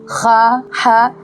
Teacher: बिल्कुल ह की तरह खा भी हलक से निकलता है लेकिन खा के ऊपर एक नुक्ता होता है।